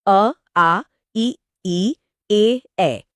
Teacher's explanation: इसमें होंठ गोल नहीं होते, बल्कि सामान्य या फैले हुए रहते हैं। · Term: अवृत्तमुखी